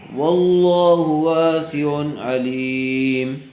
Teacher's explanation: واسع تنوین کے بعد حروف حلقی میں سے عین آیا ہوا ہے، اس لیے بغیر گننے کے جلد اظہار کر کے پڑھیں گے